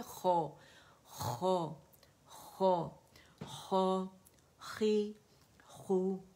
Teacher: خواہ جو ہے یہ اپنے مخرج سے یعنی نیئر تھروٹ سے ادا ہوگا، ادن الحلق سے. اس میں سے زبان کی جڑ کا جو ہمارا اوپر کا حصہ ہے وہ نرم تالو کی طرف وہ ٹھیک ہے خواہ ادا ہوگا اور یوویلا کو ٹچ کرے گا.